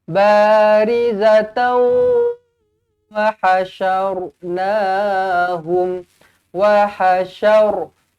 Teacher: ra dibaca dengan tebal kerana huruf sebelumnya berbaris atas. Syar bukan syar. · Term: syar tebal